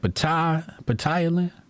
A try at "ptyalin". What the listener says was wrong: Tylen, yeah, the P is silent.